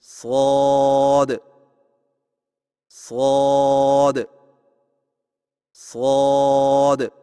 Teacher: آئیے مشق کیجیے، شین شین شین صاد کی ادائیگی میں زبان کی نوک کو سامنے والے نیچے کے دو دانتوں کے کناروں سے مضبوطی سے لگا کر اور زبان کے پچھلے حصے کو تالو کی طرف بلند کرتے ہوئے موٹی اور سیڑھی جیسی آواز میں پڑھیں، یعنی صاد صاد صاد۔